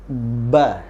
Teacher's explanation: perhatikan di awal pelafalan kita yang terjadi adalah merapatnya dua bibir kita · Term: huruf ba